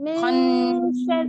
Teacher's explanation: نون کے اوپر تشدید آ رہی ہے، اس کو تھوڑا سا آپ نے غنہ کرے نا